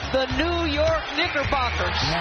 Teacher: the internet was very torn about whether or not she actually pronounced the k in Knickerbockers